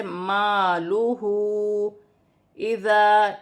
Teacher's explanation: ہا پر الٹی پیش بھی ہے اور چھوٹی مد بھی ہے، مد منفصل، اسے 1 سے 3 الف کی مقدار کھینچ کر پڑھا جائے گا